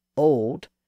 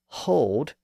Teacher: breathy sound the difference between old and hold is that slight H sound at the beginning of hold